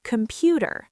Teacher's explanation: Computer, in American English, the T becomes a flap T, sounding like a fast D.